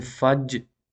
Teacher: we have this sound at the end, J. It is actually the voice sound.